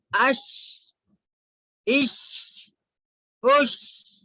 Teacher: شین، شین بھی جو نکلتا ہے یہ بیچ زبان کو اوپر کے تالو کو لگانے سے شین نکلتا ہے